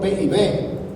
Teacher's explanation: El modo de articulación de los dos son iguales, son P, oclusivos. El punto de articulación son iguales, P y B, se articula en la parte anterior, P y B. Son articulación anterior.